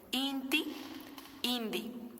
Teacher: El inga presenta un caso de asimilación cuando se sonorizan las oclusivas orales sordas al seguir a una consonante nasal.